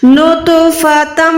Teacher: आवाज को रोकना, एक सेकंड नाक में, उसको हम गुन्ना करना कहते हैं